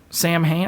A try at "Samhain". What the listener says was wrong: Sawin is how you pronounce that. Maybe not the M.